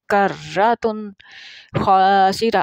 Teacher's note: را جو ہے اس کے اوپر تشدید بھی ہے، یہ 2 دفعہ پڑھی جائے گی تو خود اس کی آواز اس طرح آ جائے گی، کرتن خاسرہ۔